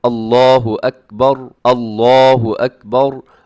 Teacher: آخر میں جو را آتی ہے نا اکبر میں، وہ را اپنی موٹی رکھنی ہے، باقی جو ہے وہ باریک ہے۔